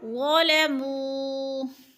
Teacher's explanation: وہ ساکن سے پہلے میم کے اوپر پیش ہے، وہ مدہ ہو رہا ہے، ایک الف کے برابر کھینچ کر پڑھیں گے۔ ظلموا، ایک الف یعنی دو حرکات کے برابر۔